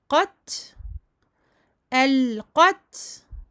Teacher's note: Hams, le souffle avec le ta.